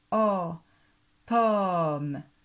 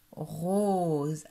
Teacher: Tes lèvres sont moins serrées quand tu fais O de pomme, alors que quand tu fais le O de rose, tes lèvres sont bien serrées.